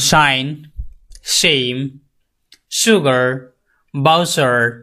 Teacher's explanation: এন্ড বাজ number eleven এটা হচ্ছে sound sound post এলভিউলার sound the tongue touches the back of the এলভিউলার রিচ